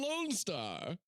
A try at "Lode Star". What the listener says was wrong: You said lone. We say lone in this house. They say load.